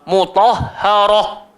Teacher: ha keluar dekat bawah tekak sekali